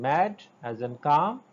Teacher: The oral passage is blocked by closing the lips. The sound is bilabial sound according to the place of articulation.